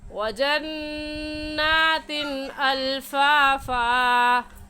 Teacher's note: وجنات میں نون مشدد ہے اور نون مشدد پر ہمیشہ غنہ کرتے ہیں تو غنہ کر کے پڑھیں گے. اور تین کی تنوین پر غنہ نہیں کریں گے کیونکہ تنوین کے بعد حروف ہلکی جو کہ 6 ہیں حمزہ ہا عین ہا غین خا، ان میں سے حمزہ آ گیا ہے.